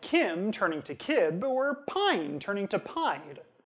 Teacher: They stay voiced, because nasals are voiced, but they sound just like regular buh and duh. If you don't know what word was intended, you wouldn't be able to tell just from what they said. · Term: denasalization